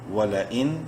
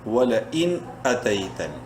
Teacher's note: واو زبر وا، لام زبر لا، ولا حمزہ نون زیر ان، ولا ان، نون ساکن کے بعد حمزہ حروف حلقی میں سے ہے، اس نون میں اظہار کریں گے، یعنی اس کو ظاہر کر کے پڑھیں گے، غنہ نہیں کریں گے